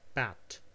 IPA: pæt